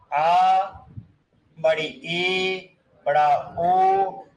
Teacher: वे स्वर जिनका उच्चारण रस्व से थोड़े ज्यादा समय के लिए होता, उन्हें कहते हैं हम दीर्घ स्वर